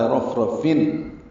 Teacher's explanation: اس میں سانس جاری رہتی ہے، اور پھر را پر ہے، تنوین کے بعد خا آنے کی وجہ سے اظہار ہے، رف رفن نون کی آواز ظاہر کر کے پڑھیں گے